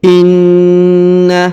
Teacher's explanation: huruf na ditahan dan ditekan karena terdapat tanda tasdid di sini ya. Maka kita tahan dan kita tekan 2 harokat atau 3 harokat.